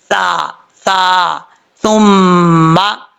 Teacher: سا جو ہے اس کا مخرج ہے زبان کا سرا اوپر والے دانتوں کے اندرونی کنارے سے لگے تو سا پڑھا جاتا ہے، بغیر سیٹی کے پڑھیں گے، اس کو سیٹی کے ساتھ پڑھنے کی ضرورت نہیں ہے